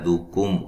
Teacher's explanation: ہا کو واضح نکالنا ہے. دکم کاف کو باریک میم ساکن کا اظہار ہے، غنہ نہیں کریں گے